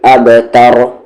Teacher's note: बा पे कलकला अच्छे से बाउंसिंग साउंड